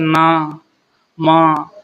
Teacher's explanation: नाक से आवाज निकलती है इसे अनुनासिक व्यंजन बोला जाता है